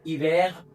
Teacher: H is always mute in French, but here pronunciation will be ash, double A H A S H sh, ash.